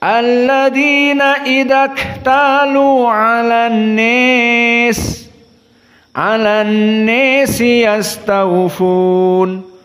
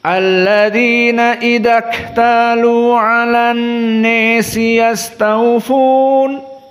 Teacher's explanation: qiraah Abu Amr dari periwayatan Ad-Duri an Abi Amr dibaca kalimat an-nas dengan al-imalah al-kubra.